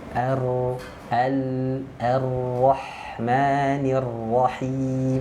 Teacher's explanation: Ini terakhir ya, inhiraf itu suara membelok. Huruf ra itu makhrajnya ujung lidahnya menyentuh ke langit-langit. Ya, makanya hurufnya itu suaranya tidak bisa keluar dari depan.